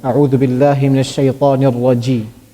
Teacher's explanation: Jim is pronounced from the middle of the tongue.